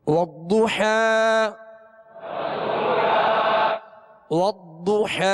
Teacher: ضاد پر پیش ہے ہونٹوں کو گول کر کے پڑھیں گے اور ضاد کو پر پڑھیں گے